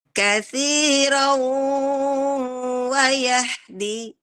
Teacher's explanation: Sempurna banget dengungnya ya, dengung masuk ke dalam.